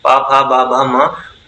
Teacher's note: होठों से यानी ओष्ठ से बोली जाने वाली ध्वनियां है, यानी हम इनके उच्चारण में ओष्ठ का प्रयोग करेंगे